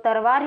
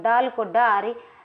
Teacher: अवधि में ल ध्वनि प्राय र हो जाती है